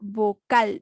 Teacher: tiene mayor golpe de voz en la última sílaba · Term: palabra aguda